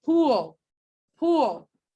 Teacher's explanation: like pool pool what's happening in the dark l is that your tongue is touching the alveolar ridge yes but then another region of your tongue is also raised and it's the back of your tongue so it's kind of forming an oof shaped here so it's